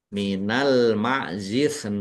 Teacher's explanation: Kemudian nun fathah ya sukun bertemu dengan huruf yang dibaca sukun karena waqaf ini dibaca melunak namanya mad layin